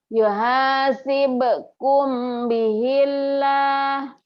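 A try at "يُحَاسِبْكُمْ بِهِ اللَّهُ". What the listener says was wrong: Kurang mantep nih ya. Yuhasibukum, bilang ember, bindeng gitu loh. Tapi ada ngiungnya, ember. Yuhasibukum bihillah ya. Lagi kurang M. Jangan ihfa ya. Bunyi M. Karena ini ihfa sapawi ya. Bukan ihfa nun mati atau tanwin yang eng ini bukan. M bunyinya tetap M tapi bindeng. Yuhasibukum bihillah gitu.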